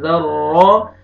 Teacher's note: ذر را کو پر بھی کرنا ہے، را مشدد ہے اور را کو فتح زبر بھی ہے، را کو موٹا بھی کرنا ہے